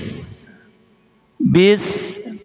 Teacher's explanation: Jadi desisnya ada, hamesnya ada.